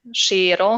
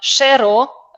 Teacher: Shiro with the long e but Shero a short one